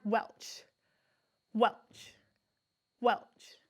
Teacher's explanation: hold your two fingers up say the word welch welch welch i don't feel a strong burst of air there